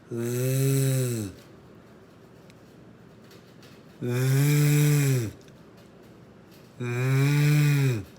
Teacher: The voiced TH has a sound of th, th, th. You take your tongue, you put it between your upper and lower front teeth, and you press down on it.